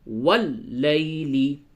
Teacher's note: لام کو تو تشدید ہے، اسے آپ سختی کے ساتھ شدت کے ساتھ اسے واو کو لام سے ملائیں گے